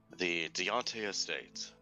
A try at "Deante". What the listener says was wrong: Deanne. The T is silent. Deanne.